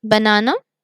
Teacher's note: one syllable is stronger which is na